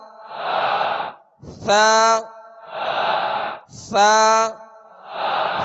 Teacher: ثا کو نرمی کے ساتھ ادا کریں گے اور ثا کا مخرج زبان کا سرا، اوپر کے سامنے والے جو دو دانت ہیں اس کے اندرونی کنارے